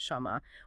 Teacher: They always pronounce it shama with that a vowel sound even though the standard written text doesn't explicitly show that vowel